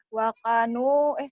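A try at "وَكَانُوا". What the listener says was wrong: K-nya panjang. Kalau kayak gitu panjang. Nah, K-nya panjang kalau gitu.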